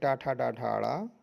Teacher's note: टा वर्ग का उच्चारण स्थान मूर्धा है।